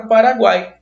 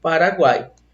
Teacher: Nós temos um tritongo. Esse tritongo nós chamamos de tritongo oral. Por que ele é tritongo oral? Porque o som só sai pela boca